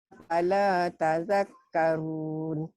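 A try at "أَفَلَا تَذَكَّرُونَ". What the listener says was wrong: Afala bukan fala ya Makcik. Afala A-nya ketinggalan. Afala tazakkarun.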